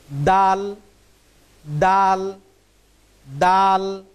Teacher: এই হরফটার উচ্চারণ হবে জিহ্বার আগা সামনের উপরের 2 দাঁতের গোড়ার সাথে সংযুক্ত হয়ে হরফটির উচ্চারণ হবে এইভাবে।